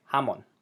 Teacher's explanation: We emphasize the last syllable on that word